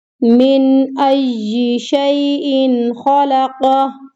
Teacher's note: نون ساکن، اگلا حرف حمزہ آ گیا تو یہاں پہ اظہار ہو رہا ہے